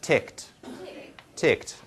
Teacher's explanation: So we have this word with an ed ending, but you know it comes out as just a t, right? No vowel here, just ticked.